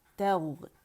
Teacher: رخاوہ شو کریں گے، غین کے اندر آواز چلے گی